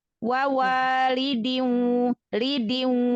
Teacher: Idgham bi gunnah, tanwin ketemu waw, idgham bi gunnah. Maka tanwinnya nggak dibaca tapi langsung idgham, langsung masuk ke huruf waw.